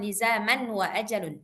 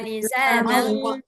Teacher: Idgham bi gunnah, benar. Jadi kalau idgham bi gunnah maksudnya masuk dan berdengung. Jadi langsung masuk ke waw, kemudian didengungkan.